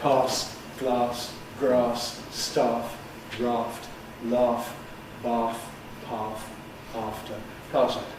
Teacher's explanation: But the point is, it hasn't moved into the same vowel as father. In the south of England, and also in received pronunciation, these words moved into the same set as father, the vowel of start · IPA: [pɑːs]